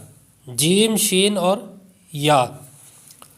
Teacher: آگے ہے جیم شین یا، حروف شجریہ، جیم شین اور یا، زبان کے درمیان اور تالو کے درمیان سے، یہ ان کا مخرج ہے کہ زبان کے درمیان اور تالو کے درمیان سے یہ ادا ہوتے ہیں